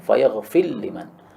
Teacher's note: Ra masuk pada lam karena mutaqariban sehingga idgham.